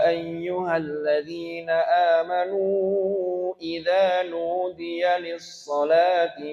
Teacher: jadi ikutlah mad wajib sehingga panjang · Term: majais